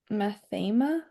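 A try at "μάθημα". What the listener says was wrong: Mathema. Good. Good. Good.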